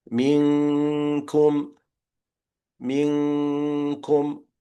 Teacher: My tongue is already on the articulation point of the kaf, right? So it's the tongue which is hitting the area between the soft and the hard palate.